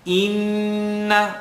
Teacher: Hamza, line on the bottom. Inna, let the sound vibrate in the nasal cavity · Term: noon shadda